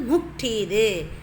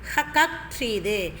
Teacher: இந்த எழுத்துக்கள்ல உள்ள ஆயுத எழுத்து தனக்குரிய அரை மாத்திரை அளவிலிருந்து குறைந்து கால் மாத்திரை அளவில் ஒலிக்கிறது அதாவது தனக்குரிய அரை மாத்திரை அளவிலிருந்து குறைந்து கால் மாத்திரையாக அளவுல குறைந்து ஒலிக்குது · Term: ஆயுத குறுக்கம்